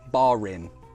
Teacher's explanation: when the next word begins with a vowel sound, or if it is a vowel, for example, bar in, we would pronounce that [r] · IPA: [barin]